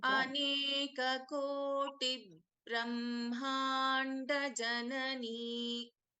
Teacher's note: this ba is getting doubled, but it is an alpa prana ba. Okay, it is not mahaprana.